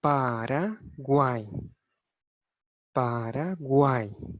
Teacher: aqui o U eu não pronuncio com tanta força, é uma semivogal. O A eu pronuncio com força, é uma vogal. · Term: tritongo